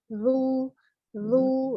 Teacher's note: ketika zal dhamma ingat dulu ujung lidahnya dikeluarkan dulu baru mengalir mulut bibirnya maju secara lembut pengucapan dhammahnya